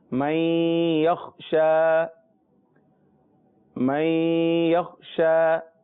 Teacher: ان کو کہا بھی حروف یرملون جاتا ہے، یا، را، میم، لام، واو، نون۔ یہاں نون ساکن کے بعد حروف یرملون میں سے پہلا حرف یا آ رہا ہے، لہذا غنہ بھی ہوگا اور ادغام بھی ہوگا۔ پہلے ادغام ہوگا پھر غنہ ہوگا۔